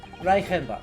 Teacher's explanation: CH before the front vowel should be a sh sound, shouldn't it?